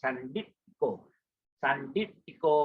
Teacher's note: So your T hit the palate.